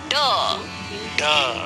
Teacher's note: बच्चों, ड मूर्धन्य ध्वनि है। इसके उच्चारण में अंदर से आती वायु जीभ की नोक द्वारा मूर्धा को छूकर रुकती हुई बाहर निकल जाती है। जीभ की नोक मुंह में ऊपर के जिस हिस्से में टकराती है, उस हिस्से को मूर्धा कहते हैं।